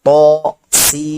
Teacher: तो को सिर्फ एक अलिफ बराबर खींचेंगे, जबकि सीन पे मद लगा हुआ है इसलिए उसको 3 सेकंड 3 अलिफ तक खींचेंगे